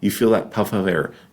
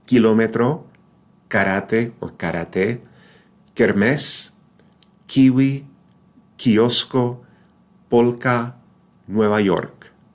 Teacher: If you put your hand in front when you say kind of, kind man, kind woman, kind of, you feel that puff of air. No puff of air in Spanish.